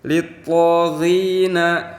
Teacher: ada huruf to yang mempunyai hukum mad badal, maka cara membacanya itu harus diayun sepanjang 2 harokat atau 2 ketukan. Kemudian jangan lupa kalau huruf to ini huruf isti'la, maka cara membacanya itu harus agak ditebalkan.